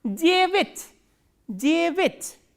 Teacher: stress is on ye. So, this ya will be reduced, and reduced a is normally pronounced as e.